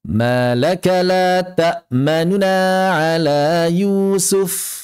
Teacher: Raum atau ikhtilas yang diamalkan di sini, maka yang kami dapatkan dari kebanyakan guru-guru kami adalah mempercepat harokat yang asalnya la ta'manuna, tidak diidghamkan menjadi la ta'manna, namun mengucapkan nun dhammahnya dengan singkat, dengan ikhtilas